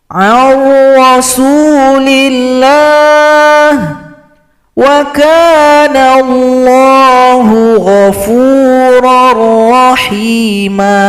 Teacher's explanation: Contoh pada huruf ra sama dengan lam, digabung atau dilebur tanpa didengungkan.